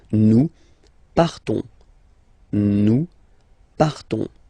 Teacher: you don't pronounce the S, you just have this on sound nasal.